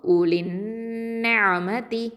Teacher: இந்த நூனில் ஷத்தா இருக்கிறதுனால என்ன பண்ணுறோம்? அக்கமல் குன்னா கொடுத்து ஓதுறோம்